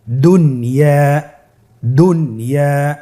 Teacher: এখানে দুন আমরা গুন্না করতে পারবো না, যদিও নুন সাকিনের পরে ইয়া আসছে, ইয়া ইদগামে বা গুন্নার হরফ।